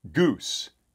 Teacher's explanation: it is the most high back vowel so it is a close vowel because it's very high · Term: goose vowel